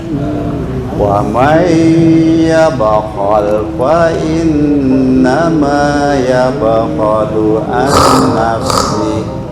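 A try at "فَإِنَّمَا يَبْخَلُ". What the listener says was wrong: Dengung. Fa innama, baca fa innama, coba ditutup hidungnya, bisa bunyi nggak?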